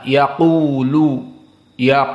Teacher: qof mufakhamah penuh dengan udara di saat kita menyebut dan pangkal lisan kita berada di alhq Al A'la yaakulu yaak maka dia termasuk huruf yang mufahamah yang muabbadah dari